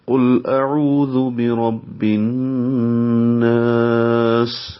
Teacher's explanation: قل قاف پر پڑھیں گے، موٹا کریں گے، لام سے ملائیں گے، لام پہ اظہار کریں گے، لام کو ظاہر کریں گے اور باریک پڑھیں گے۔